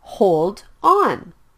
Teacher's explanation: hold ends with the consonant sound D and on starts with the vowel sound o so the sound is Blended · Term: consonant and vowel blends